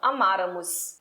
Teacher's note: estes verbos pró-paroxítonos, em que são acentuados na antepenúltima sílaba